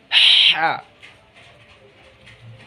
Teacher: जब बड़ी हा बोलेंगे तो हलक से हवा बाहर निकालना है हमें